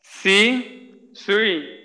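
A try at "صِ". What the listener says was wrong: হ্যাঁ ঠোঁট গোল করা যাবে না, ঠোঁট খোলা রেখেই একটু ওই যেটা বলছিলাম যে সিনের ক্ষেত্রে দাঁত লাগাইয়ে উচ্চারণ করলে সমস্যা নেই, তো দাঁত লাগাইয়ে উচ্চারণ করব। উপরের দাঁত নিচের দাঁতের সাথে লাগাইয়া। হ্যাঁ সদের ক্ষেত্রে একটু দাঁত ফাঁক রেখে, আর মোটার বিষয়টা তো অবশ্যই খেয়াল করতে হবে। সই সই, সি সই।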